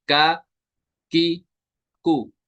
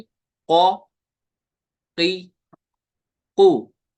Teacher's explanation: और काफ जो है ये बारीक है, और ये जुबान की जड़ और तालु के सख्त हिस्से से ज्यादा होता है।